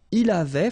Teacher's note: final T not pronounced